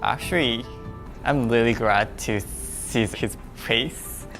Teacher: I can kind of hear an R sound intruding in there when he's trying to say an L sound. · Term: intrusion